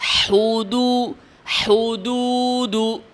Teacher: হুদু হুদু একবার গোল করার দ্বারাই কিন্তু হা এবং দালের দম্মা আদায় করা হচ্ছে।